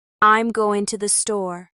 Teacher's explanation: The two often becomes ta, and the g in going disappears